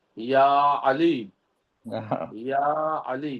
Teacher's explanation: یا جب ہم کہیں گے تو زبان کا بیچ کا حصہ اوپر تالو سے ملے گا